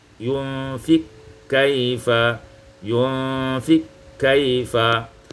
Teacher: idghamul qaf fil kaf, diidghamkan qaf pada kaf